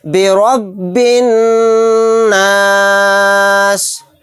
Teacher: برب، یہ با کو نون میں ملا دیں گے، یہاں پر را کو موٹا یعنی پر پڑھیں گے کیونکہ را کے اوپر زبر ہے۔ برب الناس، یہاں پر دیکھیں نون کے اوپر تشدید ہے، یہاں پر غنہ کر کے پڑھیں گے،